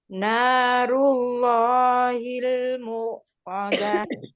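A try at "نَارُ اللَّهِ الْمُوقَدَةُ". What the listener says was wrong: Nah, ini Allahnya lafaznya tafkhim jadi harus tebal. Mu-nya pakai wawu, jadi nggak ada hamzahnya Bu. Mengalir aja Bu.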